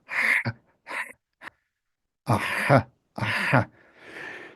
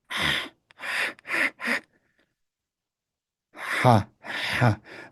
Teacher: you say an H, but you constrict your pharynx while doing so. Aha, aha. It's often sometimes described as a hoarse whispering kind of H. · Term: the unvoiced